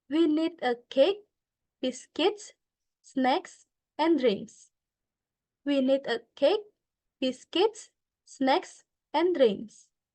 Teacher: the word cake is using Rising intonations the word biscuits is using rising intonations